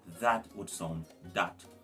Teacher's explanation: The TH blend in English is, you have the strong TH blend and you have the soft TH blend. Now the soft TH sound in Patwa is pronounced with a D.